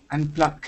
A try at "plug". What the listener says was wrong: Nope. So your G is still coming out like a K. Plug. Ug, ug. Yeah, you want to make that? Yeah, plug.